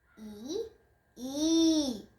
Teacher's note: দ্বিতীয় ইটা একটু টেনে বলতে হবে